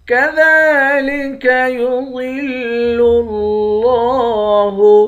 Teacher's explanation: دال کے اوپر کھڑا زبر ہے، ایک الف کے مقدار کھینچیں گے